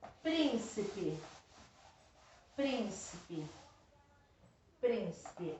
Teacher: Não é a última, não é a penúltima, é a antepenúltima. Então, é proparoxítona.